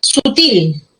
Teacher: La fuerza de voz está en la última sílaba. Termina en L.